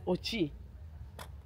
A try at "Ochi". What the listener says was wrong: It's because you're saying the O like a European.